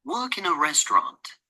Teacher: nó sẽ trọng âm, nó sẽ rơi vào cái từ work với lại cái phần đầu tiên của cái từ restaurant